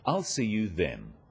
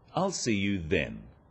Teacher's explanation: This is now a definite commitment and an end to the arrangement. Notice how the stress is on the word then to confirm that the time is definite.